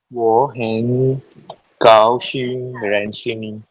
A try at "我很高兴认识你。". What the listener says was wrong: Still not high enough. High. 高兴 go up to the highest register in your voice. 我很高兴认识你 really high. Notice I just raise my hand above your head. Do this until you can do the high tones.